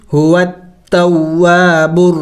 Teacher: वक़फ़ करेंगे तो वक़फ़ में मीम को साइलेंट करेंगे यानी साकिन करेंगे